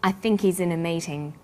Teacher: The word think is stressed in this sentence, and he's is unstressed. When these words are linked, the H is dropped.